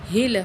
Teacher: یہ ہا جو ہے سینے سے نکالیں گے